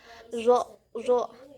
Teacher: huruf zo ini berada di bibir depan, zo, zo. Nah, keluarnya itu ihtikaki, keluarnya itu ihtikaki, adanya gesekan. · Nah, keluarnya itu ihtikaki, keluarnya itu ihtikaki, adanya gesekan. Kemudian posisi posisi pita suaranya itu majhur atau bersuara. Kemudian posisi rongga mulutnya itu tebal. Jadi kita bisa menyebutkan huruf zo itu adanya gesekan, zo.